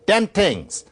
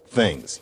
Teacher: in some vernacular American Englishes, like Brooklynese, it turns into something like a T sound. And so, for example, Ralph Cramden on The Honeymooners might say, "Dem tings," instead of things.